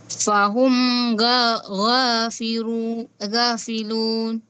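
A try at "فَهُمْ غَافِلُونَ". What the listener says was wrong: Huwag mong gawing ra ito ha. Ito ay lam. Wahum ghafilun.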